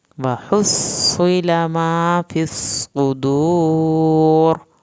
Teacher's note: صاد کی شد بھی ادا کریں اور صاد کو پر کریں، صدور واو ساکن کو کھینچ کے اور را کو پر کرنا ہے